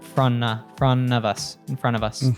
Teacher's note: And it connects to us, so it becomes of us, and then the T in the front drops, or the T in front drops, so it becomes front of us, in front of us. · of would reduce to a schwa, and sometimes it keeps the v, but we can also drop the v. He did keep it here.